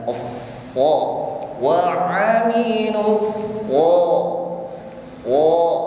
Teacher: terangkatnya lidah bagian pangkal ke langit-langit mulut sehingga bunyi sha tebal. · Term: sifat isti'la